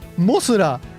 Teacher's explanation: That ends in an A, right? Not a lengthened vowel.